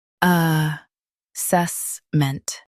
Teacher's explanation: Stress the s e s syllable and keep ment light.